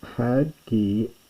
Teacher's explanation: Again, hard breathing at the beginning.